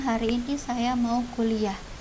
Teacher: pola intonasi deklaratif dia datar nadanya datar dan cenderung turun